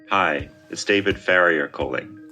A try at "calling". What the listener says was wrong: Calling, don't round your lips.